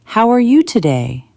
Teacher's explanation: The voice goes up at the end.